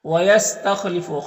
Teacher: خا حروف مستعلیہ میں سے پر پڑھیں گے